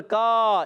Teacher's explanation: تو کاف کو باریک رکھنا ہے، اس کا الف بھی باریک. کاف کا مخرج یاد رکھیں، زبان کی جڑ اور تالو کا سخت حصہ